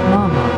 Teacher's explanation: The fourth tone goes down sharply, ma ma, which means to scold, with your voice falling quickly.